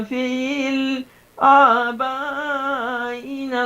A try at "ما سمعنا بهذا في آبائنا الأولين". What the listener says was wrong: فل نہیں، فی آبائنا